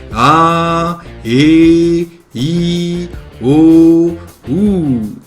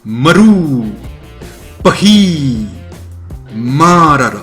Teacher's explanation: Le tarava produit un son doux et surtout continu. Il n'y a pas de son sec, abrupt, contrairement à l'occlusive glottale. Le son est, encore une fois, doux et surtout lent. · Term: voyelle longue